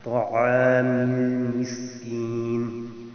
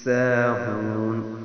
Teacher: سین کو سیٹی کی آواز کے ساتھ سختی سے ادا کرتے ہیں